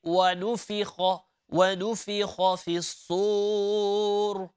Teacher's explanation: A lot of reciters, okay, would stretch here وَنُفِخَ, and that's not correct.